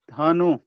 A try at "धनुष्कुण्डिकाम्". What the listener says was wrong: धनुष धनुष हाँ धनुष कुंडिकाम नहीं धनुष उसमें आधा स है, देखिए कु में आधा स है। धनुष कुंडिकाम